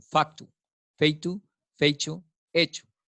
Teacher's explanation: donde había un dictongo, se convierte en un monotongo